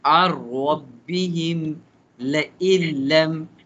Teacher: Skip the noon and tanween and pronounce lam and ra without gunna.